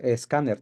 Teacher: tenemos que ponerle una e para poder pronunciarla